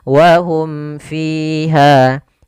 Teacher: bukan ikhfa syafawi tapi izhar syafawi. Jelas suara mimnya dan tidak boleh ditahan.